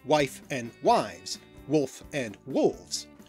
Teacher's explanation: First of all, F had to represent two sounds, both the F sound and the V sound. These two sounds are another pair of voiced and unvoiced sounds that are otherwise articulated in the exact same way, placing your teeth on your lower lip and blowing air through, what's called a labiodental fricative. · between two voiced sounds the /f/ became a /v/ and we still see this today in such pairs wife and wives, wolf and wolves